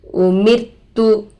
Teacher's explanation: एक ही कलमे में रोए साकिना से पहले जेर आने के वजह से रो खुद ब खुद बारीक हो गया. खुद ब खुद बारीक की आवाज़ निकलती है. · रोए साकिना से पहले जेर आकर है, रो को बारीक करके पढ़ेंगे